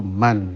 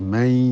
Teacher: Nun mati disukun menjadi man, tapi karena bertemu ya menjadi may. Ya, perubahan terjadi karena bertemu huruf lain.